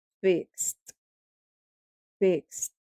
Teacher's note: los verbos cuyo último sonido sea en X, vamos a pronunciar esa terminación ed como una T.